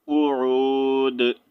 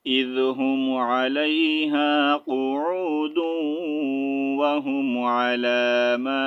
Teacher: ملا کر پڑھنے کی صورت میں آپ نے دال کو واو کے ساتھ جوائن کرنا ہے، اور اگر سٹاپ کریں گے تو سمپل قعود، ٹھیک ہے.